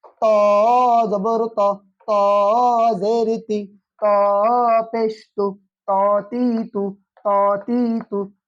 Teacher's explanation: ত। আর তর মাখরাজ আছে জিহ্বার আগা হতে শক্ত মোটা করে পড়তে হবে